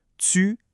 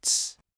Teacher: Ça commence comme un son bloqué, un T par exemple, et ça se termine en laissant passer l'air, comme pour un S. T plus S, ça donne ts. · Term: l'affrication